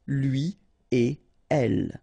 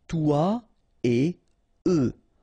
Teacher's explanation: So after this conjonction et, like we've got here, you don't make any liaison. So no links after et. Okay? So if you want to read it correctly here, it will go like lui et elle. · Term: no liaison